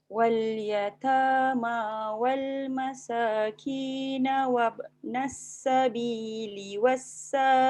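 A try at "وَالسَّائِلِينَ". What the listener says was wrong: Boleh, ambil balik wassa 4 harakat. Pendek tu.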